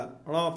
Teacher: इसको न नहीं पढ़ा जाता है बच्चों, ये टवर्ग वाला ण पढ़ा जाता है, ण नाक से।